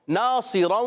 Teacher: ناصراً، یہاں پر نون الف زبر نا الف مدہ ایک الف کھینچیں گے. صاد موٹے حروف، ایکسٹرا موٹے حروف میں سے، تو وہ ایکسٹرا موٹا بھی کرنا ہے